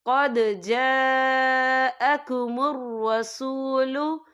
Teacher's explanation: और आगे देखें जा, यहाँ खालिद से पहले ज़बर है और इस पर मद भी है। ये मद जो है मद मुत्तसिल है, इसकी मिकदार 4 हरकत के बराबर है, तो हम इसे 4 हरकत के बराबर खींच के पढ़ेंगे।